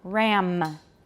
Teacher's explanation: a lot of taiwanese dropped the m final m in words